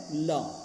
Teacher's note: मुख द्वारा जो बीच में बंद हो जाने के कारण हवा दोनों ओर से निकलती है, यानी कि दोनों गालों की तरफ से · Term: पार्श्विक व्यंजन